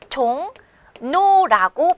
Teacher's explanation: 결국 종로라고 하는 글자에서는 이응이라고 하는 자음과 리을이라고 하는 자음과 자음이 만나서 비슷한 울림소리, 니은으로 소리가 나는 현상, 이것을 자음동화라 한다는 겁니다